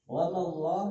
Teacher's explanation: lafaz Allah dibaca tebal namanya tafkhim karena sebelum lafaz Allah berharokat fathah